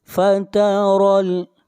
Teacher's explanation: را کو موٹا پڑھیں گے، را کے اوپر زبر ہے